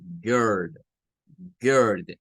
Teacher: Pareciera un sonido que es una mezcla, ¿verdad? Entre una especie de U y una especie de E.